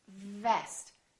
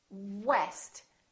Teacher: So VV is just the lower lip touching the upper teeth. Vest. And West, we round our lips and the lower lip doesn't touch anywhere.